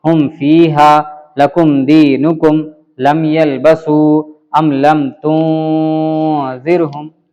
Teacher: کوئی میم میں کھینچتاؤ نہیں، کوئی غنہ اخفا نہیں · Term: اظہار شفوی